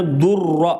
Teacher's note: دیکھو ناک میں آواز نہیں گئی، گنہ نہیں ہوا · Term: ادغام بلا گنہ